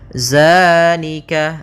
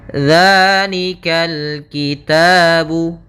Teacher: Bukan dengan bacaan zai. Di sini tidak dibaca dengan zai, akan tetapi dengan zal, ujung lidahnya menempel dengan gigi dari atas.